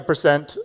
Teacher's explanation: To present is a verb, so the second syllable is stressed.